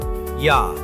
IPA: ja